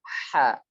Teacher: Ha terucap dari tengah tenggorokan